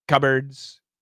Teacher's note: So when we say cupboards, there's no P. The P is gone.